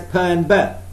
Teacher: the lips can be pressed together to produce bilabial sounds such as per and birth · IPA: /p/ and /b/